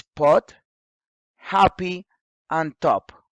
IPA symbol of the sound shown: p